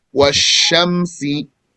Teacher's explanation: Sheen is a gentle low letter of air expulsion, mouth expansion, spreading, and sumt. So sheen is gentle, does not stop the sound. Washamsi, low letter, the tongue is down.